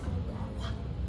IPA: kw